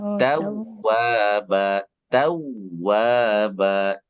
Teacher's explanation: Wnya dobel saja gak boleh tahan.